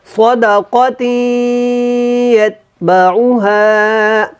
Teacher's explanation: اور یت کا جو تا ہے یہ باریک ہے، اس کو آپ نے موٹا نہیں پڑھنا